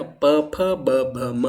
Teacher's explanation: प जो बोलने में मेरे होंठ टच हो रहे हैं, है ना, प फ ब भ म, तो दोनों होंठ टच हो रहे हैं, तो ओष्ठ जो है इसका सही जवाब हो जाएगा।